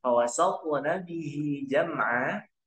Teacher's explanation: Huruf to sukun tentunya karena di tengah kata atau tengah kalimat, maka hukum bacanya qalqalah suro. Jangan diputuskan ke huruf nun.